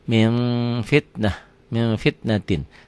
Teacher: ada udara yang keluar ketika membacanya ikhfa iya ya Min fitnatin dibacanya jadi bunyi m tapi bibirnya kebuka sedikit bindeng tetap